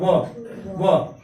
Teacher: दंत का भी प्रयोग होगा और ओष्ठ का भी प्रयोग होता है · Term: दंतोष्ठ